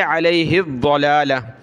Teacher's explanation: ہا کو آگے ضاد آ رہا ہے اس کے ساتھ ملائیں گے